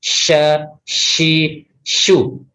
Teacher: huruf shin, nah ini dia sifatnya tafashi atau menyebar, sha, shi, shu ya.